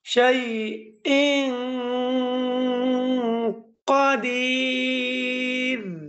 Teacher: তাহলে নাকের ভিতরে আওয়াজ নিয়ে পড়তে হয়, তাহাকেই ইখফা বলে।